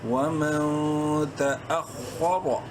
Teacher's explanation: خوا کو اس لیے کہ وہ بولڈ لیٹرز میں سے ہیں، منہ بھر کے پڑھنا ہے